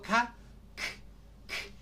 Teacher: Cuando digo K, k, k, no suena la cuerda vocal, por lo tanto es sorda.